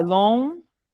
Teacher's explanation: Então, ó, é longínquo. O U é semivogal, o O é vogal inteira. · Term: ditongo crescente